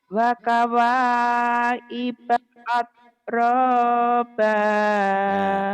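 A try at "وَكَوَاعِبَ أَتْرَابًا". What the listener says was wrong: Oh iya, sampean tidak merasa bersalah karena memang ain sampean bermasalah ya.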